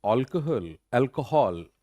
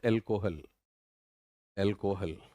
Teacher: अब यहां पे AL पे जोर ज्यादा है, KUH पे कम